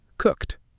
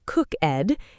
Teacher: The ED sounds like a sharp T, cooked.